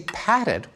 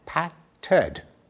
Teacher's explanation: when we say padded we stick in a vowel